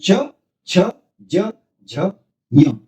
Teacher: जीभ का अगला जो भाग है, अगला हिस्सा है, वह तालु से थोड़ा सा स्पर्श करता है और वहीं से इसका उच्चारण होता है, यानी च, छ, ज, झ, य।